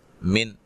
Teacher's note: نون ساکن کا اظہار ہے، غنہ نہیں کریں گے